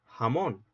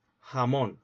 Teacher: En el sur de España dicen jamón, es decir, con el fricativo glotal sordo, con una glotal